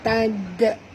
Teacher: bunyikan qalqalah kubra di hujung